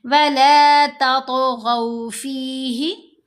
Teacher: गैन को भी मोटा पढ़ना है, हरूफ मुस्तालिया में से है